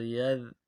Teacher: یا ذال زبر ید، ذال کو باریک کریں گے